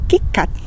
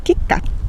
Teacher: sin pronunciar la T final